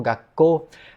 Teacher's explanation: Não acontece uma oclusão do som. O ku vira um tsuzinho pequeno, em vez de ser gakuko, vira gako. E se a gente tentar pronunciar gakuko rápido e várias vezes, gakuko, gakuko, gakuko, gako, a gente percebe que as palavras vão se modificando para acomodar melhor a pronúncia. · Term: contração